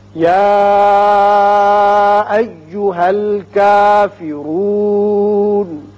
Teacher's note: کافرون را کے اوپر پیش ہے، اس کو پر پڑھیں گے. نون زبر ہے لیکن جب آیت ختم ہو رہی ہے تو ہم نون کو ساکن کر کے پڑھیں گے.